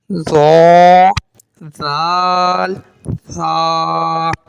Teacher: जबान का सिरा और ऊपर के दांतों के अंदरूनी किनारे से अदा होता है